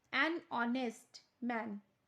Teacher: Here the consonant H is not pronounced